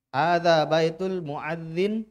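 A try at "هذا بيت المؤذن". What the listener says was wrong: Nah, bagus.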